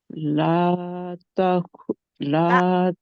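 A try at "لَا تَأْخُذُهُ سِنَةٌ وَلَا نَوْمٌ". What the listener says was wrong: ता ता झटका दें जहाँ पे झटका आना है, हमजा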